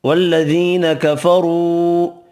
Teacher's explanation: یا مدہ ایک الف کی مقدار میں کھینچ کر پڑھیں گے، را پیش کی وجہ سے پر پڑھیں گے، مد 2 سے 4 حرکات کھینچ کر پڑھیں گے۔